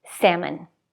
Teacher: salmon the vowel is different it's a as in cat